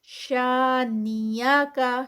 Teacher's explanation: شانیہ کا، شا پہ 2 کاؤنٹس، الف مد ہے